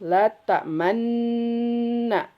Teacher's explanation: Yang kedua ada ismam. Campuran antara kasrah dan dommah.